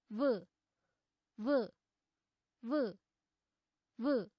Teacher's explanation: व वर्णस्य उच्चारणस्थानं दन्त ओष्ठौ स्तः